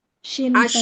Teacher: Jadi poinnya justru di tajamnya itu ya. Jadi kalau dia shin itu justru enggak tajam tapi malah terdengarnya menyebar memang ya. Suaranya di rongga mulut ya.